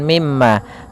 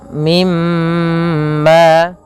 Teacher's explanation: Cara membacanya yaitu menahan suara mimnya, suara emnya sepanjang 2 harokat sebagaimana ketika kita menahan huruf nun. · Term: gunnah